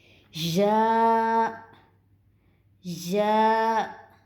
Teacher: یا کی ادائیگی درمیانے تالو سے ہوگی